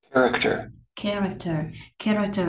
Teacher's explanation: Character ở đây mình có ba vần và dấu nhấn rơi vào vần đầu tiên. Vậy thì mình sẽ theo công thức là dấu sắc xong rồi huyền huyền.